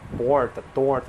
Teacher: esse R que é chamado de R retroflexo, né? Que é aquele som característico que as pessoas chamam de R caipira, porta, torta, esse R, parece o R do inglês.